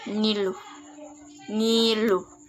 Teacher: ciri-ciri hidup, nasal, velar